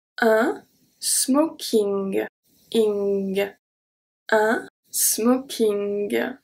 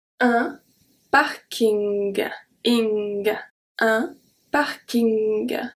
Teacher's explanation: my tongue is going to stay at the bottom of my mouth, and the N is going to be pronounced more as a nasal sound.